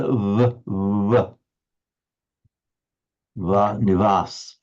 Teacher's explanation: when I say Indian or India as a whole down in Tamil Nadu for example um they distinct they pronounce quite a distinct V pretty much like the English one go up to the north of India and it's like it's a bilabial so the the lips it's not as if the lip lower lip is against the upper teeth like the English V it's a more like just a vv vas And some of them with some speakers it will come almost a W nas.